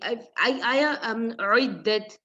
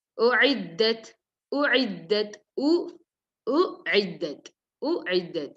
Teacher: So first you have to pronounce Hamza, then Ain. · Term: hamza, then ayn